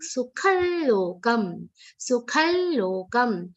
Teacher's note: Anityama sukhallokam. Anuswar is pronounced like a nasal l consonant.